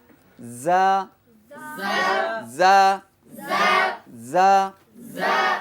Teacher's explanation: সফিরার আওয়াজ হবে কিন্তু বাতাস বের হবে না